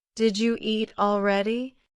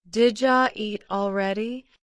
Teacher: Did you becomes did ya.